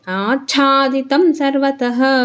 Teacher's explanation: ಹ ಆಗುತ್ತೆ ಆಚಾದಿತಂ ಸರ್ವತಹ ಯಾಕೆಂದ್ರೆ ಚ ನ ನಮಗೆ ಮಹಾಪ್ರಣ ಇದೆ ಅದಕ್ಕೆ ಅರ್ಧ ಚ ಹೇಳ್ಬಿಟ್ಟು ಆಮೇಲೆ ಚದೀರ್ಘಕ್ಷರ ಮಹಾಪ್ರಣದ ಚನ್ನ ಒತ್ತಿ ಹೇಳಬೇಕು